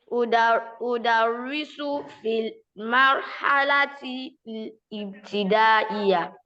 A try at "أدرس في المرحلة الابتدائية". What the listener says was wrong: So we don't say al-ibtidaiyya, but for now I can allow that to pass so that I don't give you too much hassle. So it's called al-ibtidaiyya. So you pronounce there's no amza there, but for now let it pass.